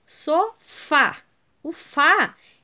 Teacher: sofá é a última sílaba tônica